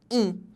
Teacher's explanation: como se ele estivesse assim o é e com um tio em vez de sair o som do e pela boca ele sai pelo nariz